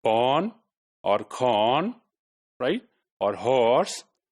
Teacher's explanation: half rounded Oh like in porn or corn · Half-rounded O, like in pawn or corn, right? Or horse. So that's also a long vowel sound, all right?